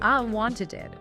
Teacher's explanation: it can sound like ed making an extra syllable like in wanted or needed.